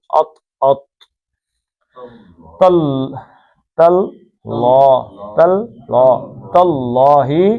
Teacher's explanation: تاللہ اللہ کا لام جو ہے مد بدل اور پڑھنا ہے، پیچھے زبر ہے، تا پتلا پڑھنا ہے. ایسا نہ ہو کہ اللہ کا لام موٹا پڑھنے کے چکر میں تے بھی موٹا پڑھ دیں تو وہ توئے بن جائے گا.